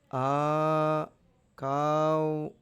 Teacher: కా అంటుంది అంటే రెండు మాత్రలు